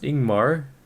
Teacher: Jungmar is pronounced Ingmar, leading with a vowel sound